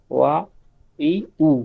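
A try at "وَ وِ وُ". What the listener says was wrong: না ই কেন, উই উই, ইংলিশে উইটা ঠোঁট গোল করে, উই উই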